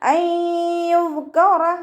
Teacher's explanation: നൂൻ സാക്കിനയെ യായിലേക്ക് ലയിപ്പിച്ച ഉന്നയോടുകൂടി ഒതുക്കൊടുക്കുക കേട്ടോ. നൂനിൻ്റെ സൗണ്ടിനെ യായിലേക്ക് ചേർത്തി കൊടുക്കുക. നൂനിൻ്റെ സൗണ്ടിനെ അവിടെ വ്യക്തമായിട്ട് കേൾപ്പിക്കരുത്.